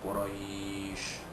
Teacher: Quraisy ini madlin, kalau kita wakafkan jadi madlin, panjangnya 2 harakat